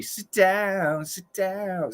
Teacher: a stop t and a d but uh it's very british so he's doing a stop t but then his d is very much like a t